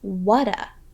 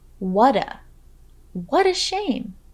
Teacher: listen for the D sound you hear after linking the words what and a